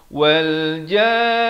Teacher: Bila masuk ke nun, dengungkan dahulu 2 harakat. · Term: mad lazim kalimi musakhkhal